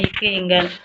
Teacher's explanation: நாவினோட முதல் பகுதி வந்து அண்ணத்தை தொடுவதனால் பிறக்கறதுதான்